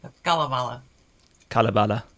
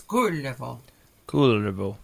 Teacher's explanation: Notice this being Finnish that you have the accent on the first syllable. First syllable, and Finnish.